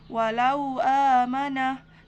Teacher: mad lin karena huruf wau sukun didahului oleh huruf yang berharakat fathah dibaca panjang 2 harokat kemudian mad badal karena huruf mad bertemu Hamzah dalam satu kata